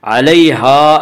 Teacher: علیہا الف مدہ، الف ہمیشہ مدہ ہوتا ہے، الف سے پہلے زبر ہوتا ہے، الف مدہ کو ایک الف کے برابر کھینچ کر پڑھیں گے۔